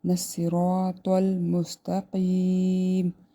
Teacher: صاد، را اور طا، یہ تینوں موٹے پڑے جائیں گے